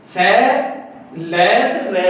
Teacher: ਇਹਨਾਂ ਦਾ ਉਚਾਰਨ ਲਗਭਗ ਦੰਦਾਂ ਦੇ ਪਿਛਲੇ ਹਿੱਸੇ ਤੋਂ ਹੀ ਹੁੰਦਾ ਹੈਗਾ ਤੇ ਇਹਨਾਂ ਦੰਤੀਆਂ 'ਚ ਹੀ ਕਾਊਂਟ ਕਰ ਲਿੱਤਾ ਜਾਂਦਾ ਸਖਤ ਤਾਲੂ ਦੇ ਵਿੱਚੋਂ।